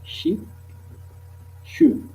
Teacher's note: les sons ch, constrictive, fricative, prédorso-post-alvéolaire